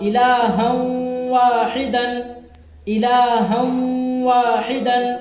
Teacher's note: تنوین کو واو سے ملا کر غنہ کر پڑھیں گے، غنہ کر کے پڑھیں گے۔